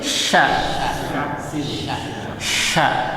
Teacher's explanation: dia makhrajnya di mana Di tengah lidah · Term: syin